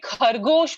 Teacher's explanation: kargosh sounds a lot more harsher because you would be aspirating you would be expelling more air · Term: aspirated sound